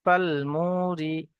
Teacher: মিম ও পেশ মু, ফাল মু। ওয়াও সাকিনের পূর্বে পেশ এসছে, ওয়াও মাদ্দা, এক আলিফ পরিমাণ টান দিয়ে পড়তে হবে।